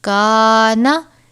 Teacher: کاف الف زبر کا، نون زبر نا، کانا۔ یہاں پر الف سے پہلے کاف ہے، کاف باریک حرف ہے اس لیے ہم الف کو بھی باریک پڑھیں گے